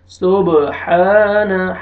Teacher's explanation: یہاں پہ با قلقلہ، حروف قلقلہ میں سے ہیں، یہاں پہ ڈبل ساؤنڈ آئے گا